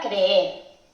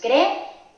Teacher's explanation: En la palabra creer tenemos dos Es, o sea, dos vocales fuertes. Como son dos vocales fuertes, forman un hiato, así que se tienen que decir, que pronunciar en dos sílabas diferentes.